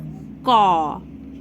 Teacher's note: আমরা যখন ক উচ্চারণ করছি তখন কিন্তু আমাদের তার সঙ্গে অ যোগ হচ্ছে